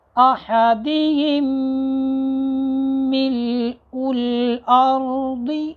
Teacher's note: پہلی میم کو دوسری میم میں ملا دیں گے اور غنہ بھی ہوگا